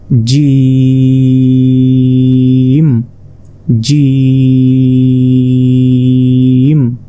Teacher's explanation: জিমটি উচ্চারণ হবে জিহ্বার মধ্যভাগ, তার বরাবর ঠিক উপরে তালুর সঙ্গে লাগিয়ে